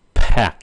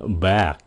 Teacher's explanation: chữ kế là pack một cái là nổ bật ra